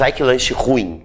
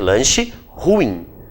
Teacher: Ruim, a sílaba tônica é o in. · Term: palavra oxítona